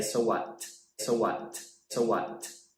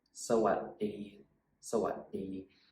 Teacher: When you say sawadee, at the what part of the word, you actually stop the sound and you put your tongue on the roof of your mouth like this. Oh, you can't see it.